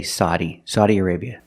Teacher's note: some people make the open sound ah, like hot and stop, and they say Saudi